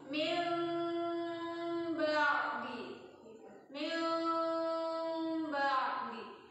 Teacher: Ketika ditahan 3 harokat, giginya nutup tapi bibirnya enggak nutup. Bibir nutupnya itu ketika bunyi ba. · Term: iqlab